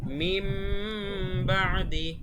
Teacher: যেমন এখানে আছে মিন বাদি লেখা, কিন্তু আমরা মিন বাদি পড়বো না, আমাদের গুন্না সহ বলতে হবে এবং মিম বানিয়ে বলতে হবে। মিম বাদি, মিম বলতে হবে, মিম বাদি। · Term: ইকলাব